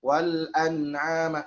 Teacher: terasa gunahnya, ya. Di nun sukun terasa.